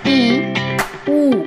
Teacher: जो हमारा मुख विवर है वह सबसे कम खुलता है एकदम थोड़ा सा खुला हुआ भाग रहता है मुख का हमारे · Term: समृत स्वर